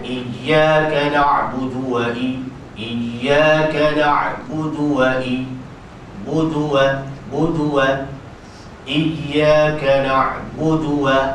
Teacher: Waw tu masuk tu maknanya disambar sebutan tu, tidak dipanjangkan tu. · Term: sambaran sebutan